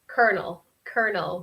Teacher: We don't pronounce really the O, the R, or the second O. It's kind of a ER sound.